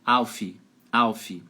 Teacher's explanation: Cuidado para não colocar uma vogal depois de F fazer Alf Alf que nós brasileiros a gente tem essa mania